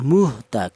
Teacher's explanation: huruf ha ini yaitu termasuk huruf halaq yaitu huruf-huruf yang keluar dari tenggorokan · Yaitu kalau idhar itu artinya huruf-huruf yang dibaca jelas yaitu di mana ada enam huruf yaitu hamzah ha ko ain gin itu dibaca idhar cara bacanya ini dibaca jelas ya muht jelas keluar dari tenggorokan bagian bawah · Cara bacanya ini dibaca jelas ya, la muhta, jelas keluar dari tenggorokan bagian bawah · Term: izhar halqi, idhar halki